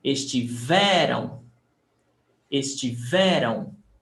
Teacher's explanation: The stressed syllable is before the last.